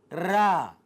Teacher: जिसे बोलते समय मेरी जीभ में कंपन हो, उस वर्ण को प्राकंपित या लुंठित वर्ण कहते हैं